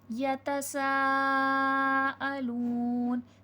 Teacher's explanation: सीन हुर्फ़े सफ़ीर है, सीठी की आवाज़ आएगी, मदे खींच के पढ़ा जाएगा।